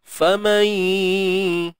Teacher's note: Cuma yang hilangnya ialah bila kata idgham di sini, naqis tadi, tidak sempurna. Makhraj nun memang dah tak ada, tapi sifatnya kekal lagi, sifat dengung dia. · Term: idgham bi gunnah